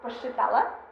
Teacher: you can see that pitch is low on the pretonic vowel, high on the stressed one. And the yellow line you can see here is intensity.